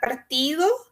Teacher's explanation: esse D entre vogais ele pode ser pronunciado bem sutilmente ou até mesmo eliminado, né? Quando a gente fala mais informalmente, né, no espanhol. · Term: D relajado